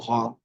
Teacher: এটা গ না, আবার ঘ, একেবারে ছেড়ে দেওয়া না, গটাকে মোটা করে শক্ত করে গ। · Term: গয়নের উচ্চারণটাও